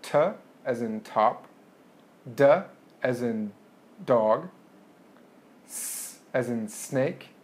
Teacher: sounds that are made with your tongue touching your alveolar ridge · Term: alveolar sounds